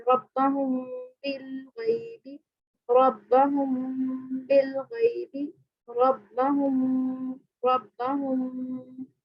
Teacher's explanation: اگر میم ساکن کے بعد با آ جائے تو میم کو اس کے مخرج میں چھپا کر پڑھتے ہیں. اسے اخفاء شفوی کہا جاتا ہے، یعنی چھپا کر پڑھنا.